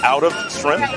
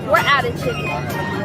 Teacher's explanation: they said out of quickly, so it almost sounds like one word, outa